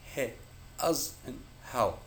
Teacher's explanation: The sound is simply the friction caused by the air being expelled through the gap between the vocal cords. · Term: glot consonant